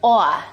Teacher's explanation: a raised vowel in words like thought and cloth. It sounds something like aw.